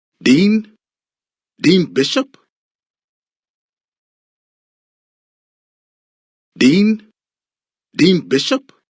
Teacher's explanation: The speaker uses a sharp rising intonation to show surprise or disbelief.